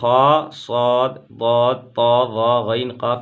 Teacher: خا صاد ضاد طا ظا غین قاف ان کو ہمیشہ پر پڑھتے ہیں، موٹا پڑھتے ہیں